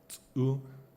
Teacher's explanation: Lak has tsu. It's a glottal affricate, tsu. The word for earth, lur, is in Lak is luchchi, and there's a strange phonetic development I can't go into now, but it's too technical.